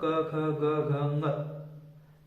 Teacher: कंठ से पूरा क वर्ग बोला जाता है, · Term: कंठ्य वर्ण